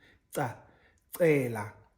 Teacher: the dental clicks again it's the tongue against your front teeth